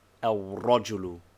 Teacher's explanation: the lam has dropped its sound but not its form · That is, the sukoon of the first of the two letters and the vowel of the second coalesce together. In al-rajulu, the lam of alif lam assimilates itself, first of all to the ra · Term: tashdid